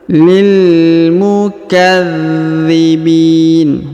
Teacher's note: huruf dha ditahan dan ditekan karena terdapat tanda tasdid